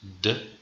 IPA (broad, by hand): d